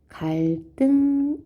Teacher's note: 리을 받침 뒤에 드스즈가 오면 예를 들어 갈 리을 받침이 있어요. 등 디귿이 왔어요. 그러면 갈등 이렇게 된 소리가 됩니다.